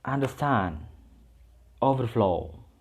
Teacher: compound verb, the stress in the second part